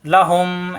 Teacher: সাকিন তাজিদ পাশাপাশি এই হুমি এইমের সাথে এরপরে গুনা হবে লাহুম দুই ঠোটের ভিজ অংশ থেকে গুনা হবে